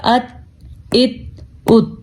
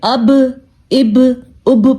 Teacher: تا حروف قلقلہ میں شامل نہیں ہے، با شامل ہے، اس لیے ہم نے یہاں پہ جھٹکا دیا